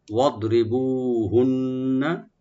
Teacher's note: ওয়াদ রি বলবো, বু একালে টানবেন। আর হুন্না এখানে নুন মুসাদ্দাদ একালে গুন্না করব আমরা, একালে পরিমাণ, টান হবে না।